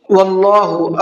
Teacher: اللہ کے لام کو منہ بھر کے پڑھنا ہے